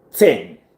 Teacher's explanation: Whereas for the tar sound in ten, you have the voiceless alveolar plosive. One bilabial, the other one alveolar.